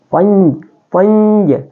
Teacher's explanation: Dia adalah ikhfa hakiki. Jadi cara bacanya dalam hukum tajwidnya adalah dibaca dengun, seakan-akan nun sukun itu adalah huruf sukun bunyi ng